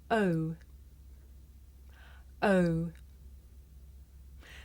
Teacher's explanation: This is a diphthong, a double vowel sound. The shape the mouth makes changes from the beginning of the sound to the end.